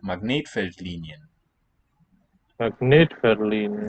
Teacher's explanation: the main stress is on the net